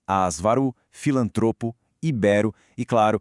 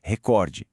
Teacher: em todas elas, sem exceção, a força tá na penúltima sílaba.